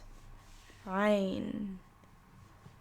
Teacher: And then there's ayn, which again, like I said, I don't have many tips for pronunciation for this one, but I've noticed that when I pronounce the ayn, my throat gets a bit tighter instead of more open and looser like some of the other letters.